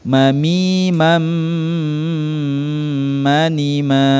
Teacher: kemudian apabila nun sukun atau tanwin setelahnya terdapat huruf mim maka suara tanwin atau nun sukun dimasukkan ke huruf mim dan berdengung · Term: Idgham Bighunnah